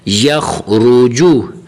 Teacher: یہاں حرف خا کو موٹا کرنا ہے اور حرف را کو بھی. حرف خا جہاں بھی آئے تو یہ موٹی پڑی جائے گی اور را صرف ایک حالت میں بریک پڑی جائے گی جب را کے نیچے زیر کسر آ جائے.